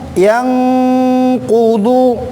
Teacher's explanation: suara nun mati itu dijemput ke huruf kop tapi dia ada dengungnya juga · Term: ikhfa